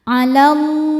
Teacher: Lam jalalah dibaca tafkhim karena sebelumnya fathah, maka lam dibaca tebal.